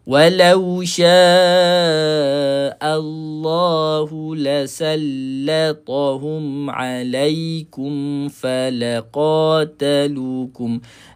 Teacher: Walau sya'a bukan o tapi a.